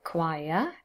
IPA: kwaɪəʳ